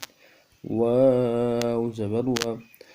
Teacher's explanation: واو کو 3 الف کی مقدار میں کھینچنا ہے، زبر میں منہ اوپر کی طرف کھلے گا، نرمی کے ساتھ ادا کرنا ہے۔